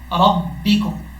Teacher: را با زبر رب, با زیر بی, ربی کاف میم پیشکم, ربکم. را کے اوپر جب زبر ہو را پر پڑھا جاتا ہے, یعنی موٹا